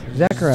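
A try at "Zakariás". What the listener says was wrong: Zakaras. You have to emphasize the first part.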